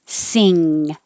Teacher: the back of the tongue is very high and touches the back of the mouth